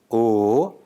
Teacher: a long mid-back rounded vowel in Telugu articulated with the same tongue and lip position as O but sustained for a longer duration